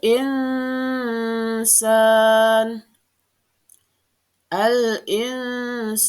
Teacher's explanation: dibaca dengan samar dan mendengung